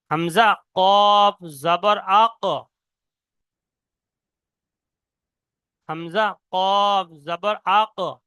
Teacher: জিহ্বার গোড়া এবং তার বরাবর উপরে তালুর সাথে লাগিয়ে উচ্চারিত হয় দো নোক্তাওয়ালা কফ। পুরো জিহ্বার গোড়া এবং ওই সোজা উপরের তালু, জিহ্বার গোড়া উপরে যে একটা ছোট মতন গোস্ত ঝুলে রয়েছে, ও যেটা আমরা বাংলা থেকে আমাদের বাঙালি পরিভাষায় বলা হয় আলজিভ বলা হয়, বা ছোট জিহ্বা বা আলজিভ বলা হয়।